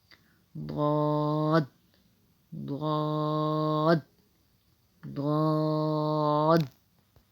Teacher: زبان کے کنارے، زبان کی کروٹ، اس کو جو ہے وہ آپ نے اوپر کی دانتوں کی جڑوں سے ٹچ کرنا ہے، جب جا کے جو ہے وہ ضاد ادا ہوگا۔ ضاد ضاد ضاد۔